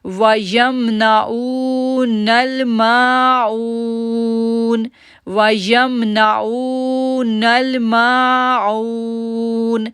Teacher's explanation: او کو ہم نے کھینچا کیونکہ واو ساکن سے پہلے پیش ہے، ما کو ہم نے کھینچا کیونکہ الف سے پہلے زبر ہے، اور اون کو ہم نے کھینچا کیونکہ واو ساکن سے پہلے پیش ہے.